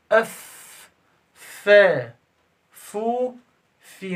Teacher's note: الفاء من بطن الشفة مع أطراف الثنائية العليا